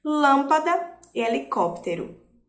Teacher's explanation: E temos também as proparoxítonas, que é quando a antepenúltima sílaba é a mais forte, ou quando a terceira da contagem é a mais forte.